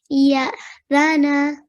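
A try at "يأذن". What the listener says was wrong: Good. Well done.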